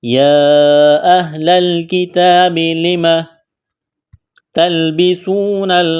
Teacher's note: واو ساکن سے پہلے پیش ہے واو مدہ ہے, الف کے برابر کھینچنا ہے